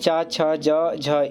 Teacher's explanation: च छ ज झ इन चार वर्णों को स्पर्श संघर्षी व्यंजन के नाम से जाना जाता है